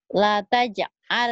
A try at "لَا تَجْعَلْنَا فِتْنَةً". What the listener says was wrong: Lanya panjang. Itu kan matobi. La taj'al na fitnatan.